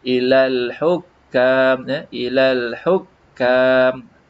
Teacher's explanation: Dia sebut, ini la ada satu harkat. Lam yang mati ini pun mempunyai hak satu harkat. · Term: alif lam qamariyah